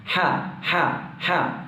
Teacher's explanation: ഹ ഇൻ്റെ മഖ്റജ് നമ്മൾ നേരത്തെ ഐൻ്റെ മഖ്റജ് പറഞ്ഞതുപോലെ തൊണ്ടയുടെ മധ്യഭാഗത്ത് നിന്നാണ്.